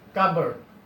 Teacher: in the word cupboard, P is not pronounced clearly.